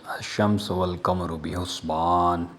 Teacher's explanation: الشمس والقمر میں الشمس ہم نے الف اور لام کے بغیر پڑھا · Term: شمسی حروف